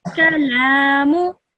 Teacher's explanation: the lam has a standing fatha on it. So you would pronounce that for 2 seconds.